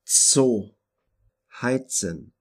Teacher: the letter Z, which is a combination of the sounds T and S